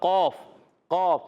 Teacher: یہ ادا ہوتا ہے زبان کی جڑ اور تالو کا نرم حصہ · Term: موٹا قوف